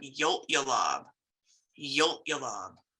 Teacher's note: you'll notice that glottalized um L yo you're gonna kind of cut that short